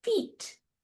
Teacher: when I start to say that word feet, I'm already tensing for that high eat sound